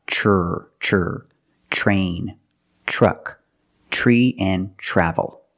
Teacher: Use the ch plus the R, the voiced R sound.